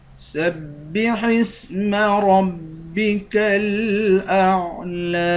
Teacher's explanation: سین کو با کے ساتھ ملا کر با کو سختی کے ساتھ جمع کر پڑھیں گے